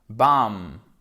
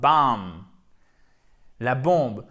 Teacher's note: Le B, il ne se prononce pas. Il s'écrit, mais il ne se prononce pas.